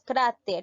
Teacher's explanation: cráter lleva la mayor fuerza de voz en la sílaba cara es una grave sí porque el acento lleva en la penúltima sílaba